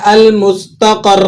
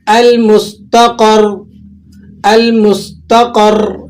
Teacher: یہ جو را ہے اس کی ادائیگی کے وقت زبان میں ذرا سا راشہ آتا ہے، ٹھیک ہے، لیکن اس کو ذرا لمبا مت کر دیجئے گا کہ اس سے مطلب حرف بگڑ جائے، جیسے بعض لوگ اسے اس طرح سے پڑھ دیتے ہیں المستقر، تو یہ درست نہیں ہے۔